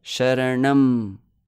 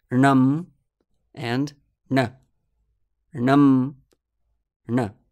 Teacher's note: we do find that it takes actually 2 matras to pronounce the syllable nam. Just listen, sharanam, laghu laghu guru, and compare it to just sharana, which is an uninflected form of the same word.